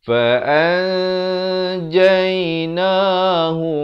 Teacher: Ikhfa hakiki. Nun mati bertemu jim. Asalnya fa'an. Tapi bila datang jim disamarkan. Itu maksud ikhfa. Disamarkan kadar panjang 2 harakat. Jadi nun pun tidak, jim pun tidak.